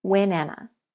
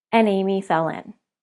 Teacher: we linked the consonant onto the vowel together the words are pronounced when Anna you can do this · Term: linking consonants to vowels